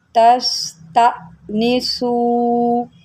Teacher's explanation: یہاں پر لوگوں کو پتہ ہی نہیں ہے کہ یہاں پر جرک دینا ہے۔ حمزہ جب ساکنہ ہوتا ہے، حمزہ کے اوپر جب جزم آتی ہے تو اس کو ہم جرک دے کے پڑھتے ہیں، اس کو ہم جھٹکا دے کے پڑھتے ہیں۔